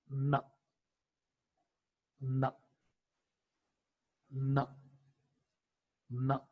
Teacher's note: So this is how is the production of the sound n, a voiced alveolar nasal consonant sound.